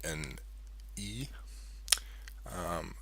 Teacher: we have a high front vowel, maybe an E